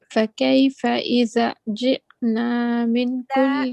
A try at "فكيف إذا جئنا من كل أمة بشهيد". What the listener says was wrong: Stretch, please. Alif madda. إذا جئنا. When we stop here, we say bishahid. Okay, you change the double kasra into a sukun.